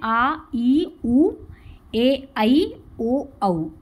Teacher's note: इसमें अधिक समय लगा है, दोगुना समय है, इसलिए ये दीर्घ स्वर है